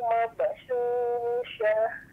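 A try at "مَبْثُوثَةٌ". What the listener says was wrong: Mabasusa Bu, bukan syu. Mabasusa. Sa tipis deh Bu, yang di ujung lidahnya, di ujung itu.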